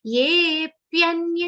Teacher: Ye is a long sound followed by avagra. So it will be super long.